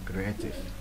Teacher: đây là nhấn phần hai creative nha